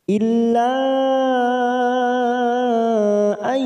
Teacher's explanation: ada Mad yang bertemu dengan Hamzah di lain kalimat namanya bacaan Mad Jaiz munfasil kita panjangkan empat harakat